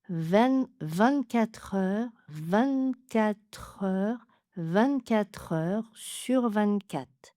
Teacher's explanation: On peut enlever le R final, ce qui permet d'alléger un petit peu parce qu'on a beaucoup de R.